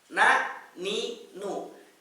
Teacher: Tadi sudah kita bahas. Nun dari ujung lidah bertemu dengan langit-langit yang keras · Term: huruf nun